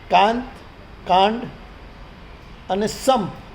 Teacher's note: દરેક અનુસ્વાર આપણે નકાર રૂપે નથી લેતા, સંપ એમાં તો અનુસ્વારનો મ ઉચ્ચાર થયો, અને કાંત એનો ઉચ્ચાર તો ન રૂપે થયો. કાંડમાં અનુસ્વારનો ઉચ્ચાર હણ છે.